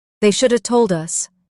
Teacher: Stress shoulda and told.